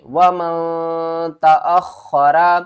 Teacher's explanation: وَمَن تَأَخَّرَ، یہاں پر اخفا کریں گے، نون ساکن کے بعد آگے حروف اخفا میں سے تا رہا ہے، یعنی نون کی آواز کو چھپا کر پڑھیں گے